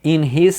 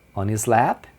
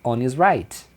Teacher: O his perde o H e fica inis